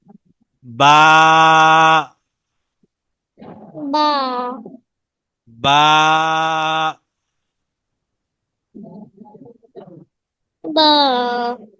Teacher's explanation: দুই ঠোঁটের ভিজা অংশ একসাথে মিলে